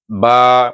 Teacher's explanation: dia tertahan mulut kita ni tertahan nafas kita sebab tutup ah tertahan nafas kemudian syiddah suara pun tertahan bila kita buka aje mulut tu baru bunyi ba baru tulah dia terlepas eh. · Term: huruf ba